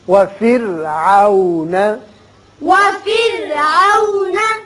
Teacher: را کو باریک پڑھیے اس لیے کہ پیچھے زیر ہے